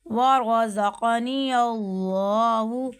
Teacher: ورزقنی اللہ، اب ورزا، زا جو ہے نا سیٹی والا حرف آ رہا ہے، یہاں پہ سیٹی کرنی ہے، ورزقنی اللہ، اللہ کے نام سے پہلے کیا ہے؟ زبر آیا ہے، اس لیے ہم نے یہاں پہ موٹا پڑھا